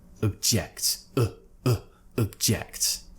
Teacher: Again, what's happening here is in the noun form, object, we're pronouncing it with an O sound. But when we shift the stress to the second syllable, we're actually going to now relax the O sound, and it's going to be replaced with a schwa.